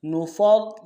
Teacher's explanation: لا نفرق میں فا کو را کے ساتھ ملانا ہے، را کے اوپر تشدید زور دیں گے، پہلے را کو موٹا ادا کریں گے، دوسرے را کو باریک ادا کریں گے، نفرق، قاف کو موٹا ادا کریں گے۔